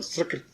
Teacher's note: सकृत जो है स से, दंती स से उच्चारण करो सकृत